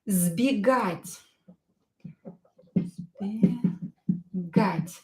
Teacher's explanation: S will be pronounced as Z because it is located near voiced consonant B.